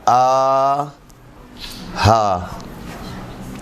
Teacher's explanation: زبان کی طرف سے حلق کے انتہائی حصے سے 2 حروف ادا ہوتے ہیں، آ ہا، سوسخانی والی حمزہ اور سوسخانی والی ہا، یعنی 2 چشمی ہے۔